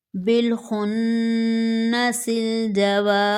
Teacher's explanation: یہاں دو جگہ نون مشدد ہے دونوں پر غنہ کریں گے